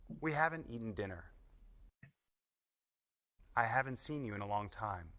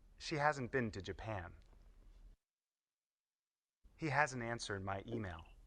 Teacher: When we use the contractions haven't and hasn't, we often don't say the sound t at the end.